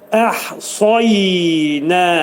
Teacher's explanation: sad hərfi qalın oxunacaq, dil kökündən yuxarı qaldırılır. Yənin üstündə 2 saniyə qalırıq.